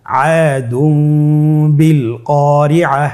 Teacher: তানবিনকে মিম দ্বারা পরিবর্তন করে গুন্না সহিত পড়ব